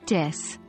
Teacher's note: the TH sound in this might be pronounced more like a D, so it sounds like dis.